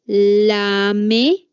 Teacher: Luego tenemos los laterales. Aquí el aire pasa rozando los lados de la cavidad bucal, no pasa por en medio, sino por los lados.